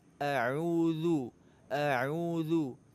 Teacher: Huruf zal makhrajnya ujung lidah dengan ujung gigi seri atas.